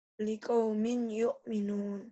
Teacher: karena tanwinnya ketemu ya, liqaumin bunyi n-nya melebur menjadi y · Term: idgham